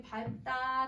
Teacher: 밟고 밟지 그 다음에 밟다 다 밥으로 발음을 하는 거예요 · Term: 비읍